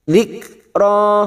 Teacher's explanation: ada huruf kaf sukun yang mempunyai sifat hamas pada saat disukun. Dzikra, ro 2 harokat matobi'i, tidak boleh lebih, tidak boleh kurang.